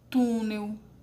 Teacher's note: O tu é a sílaba mais forte, ela é a penúltima sílaba